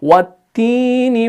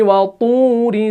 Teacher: ता और दाल जो है ये बारीक है, दोनों मुरक्कक है, और तौ जो है ये मोटा है, मुफख्खम है, इसको मोटा पढ़ना है।